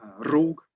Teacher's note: then we have the double-r, it is pronounced like a trill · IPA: [r]